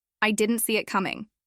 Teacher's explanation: Didn't becomes didn't with the t softened. See it connects almost like see it or even see it.